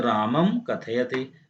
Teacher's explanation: पद के अंत में हलंत म के बाद किसी भी व्यंजन के आने पर म को अनुस्वार हो जाता है।